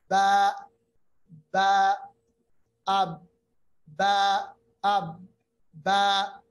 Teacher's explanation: बा जब हम पढ़ते हैं तो हम होंठों के तर वाले हिस्से को मिलाते हैं